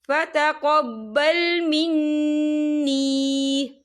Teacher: محررا فتقبل منی، یہ دیکھیے منی یہاں نون مشدد ہے تو یہاں پر غنہ بھی ہوگا، اور یہاں پہ یا مدہ بھی ہو رہا ہے، یا ساکن سے پہلے زیر ہے تو ہم اسے 2 یا 3 حرکت کے برابر کھینچیں گے